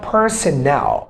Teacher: the third syllable of this word, personnel, is stressed